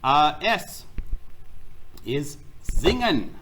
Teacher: S is singen. In my ears, I hear a little bit of a z sound, like a buzzing bee.